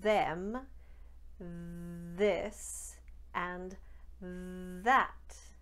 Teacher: the voiced version of the th sound on words like them this and that do you hear the vocal chords are in play on the sound what happens in those cases is the th will become d